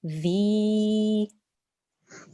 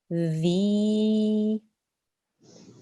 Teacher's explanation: this isn't a z sound, it's a the sound with your tongue touching the top front teeth